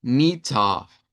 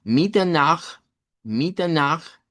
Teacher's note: vamos a pronunciarla como mita con una a centralizada, mita y note que esa a es más grave, no suena como esa de marina, que marina ahí como si supiera el a en el isva.